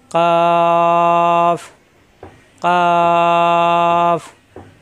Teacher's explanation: কাফ জিব্বার গোড়া একটু আগে বাড়িয়ে উপরের তালুতে চাপ দিয়ে